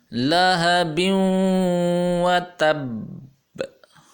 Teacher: یہاں پہ با اور واو آپس میں مل رہی ہیں تو یہ غنہ بھی ہو رہا ہے۔ لہب، کیونکہ یہ حروف یرملون میں سے واو آتا ہے، اور جب حروف یرملون تنوین کے بعد آتے ہیں تو ان میں غنہ ہوتا ہے۔